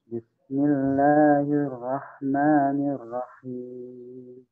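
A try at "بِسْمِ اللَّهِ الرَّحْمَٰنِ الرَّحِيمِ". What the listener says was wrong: Ya, tadi sama dengan sebelumnya, maaf terdengar di saya sin dan ha terputus dengan huruf di depannya. Sama ya, setiap kali kita menemukan huruf sukun, suaranya dan sifat dari huruf sukun itu harus nyambung dengan huruf di depannya. Bismi, ba dengan sin nyambung. Bismi, rahma.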